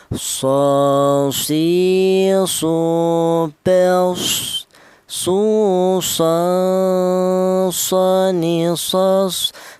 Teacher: huruf shad, keluarnya huruf berasal dari ujung lidah menyentuh pangkal gigi seri bawah.